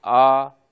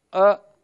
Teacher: आ यह विवृत है अ यह संवृत है · गले को खोल देंगे विवृत हो जाएगा